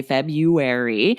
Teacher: that sounds like there's no r after the b at all